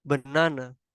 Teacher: This first syllable is stressed, while the second and third syllable are unstressed